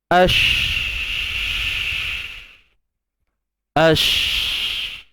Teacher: Bunyi sh, bunyi yang berhembur, bersepah, bunyi bersepah. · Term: tafashi